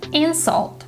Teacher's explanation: insult is a noun and stresses on the first syllable